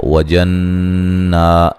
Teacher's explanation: نون مشدد پہ غنہ ضروری ہے